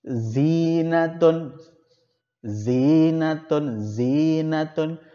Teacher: tidak menghilangkan ciri khasnya yaitu Gigi atas dan Gigi bawah itu bersentuhan